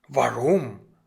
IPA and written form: ˈvaʁʊm (warum)